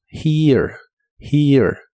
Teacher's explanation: La H suena como una J suave y la primera E suena como una I larga que termina con E suave.